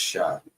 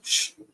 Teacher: So a lot of times at the end, the pronunciation of that last character, that vowel sound, that ah sound, is going to drop off, and it's just going to be the consonantal sound. So like if it was the sha, for example, it's not going to be pronounced sha.